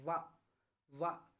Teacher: वा जब आप बोलेंगे तो आपका जो होठ है वो दांतों से टकराएंगे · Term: दंतोष्ठ